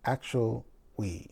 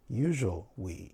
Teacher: you saw that my lower lip moved, and when it moved, it made a W sound